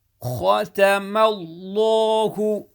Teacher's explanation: Kha is full mouth, ta empty, mim join with strongly with Allah's lam.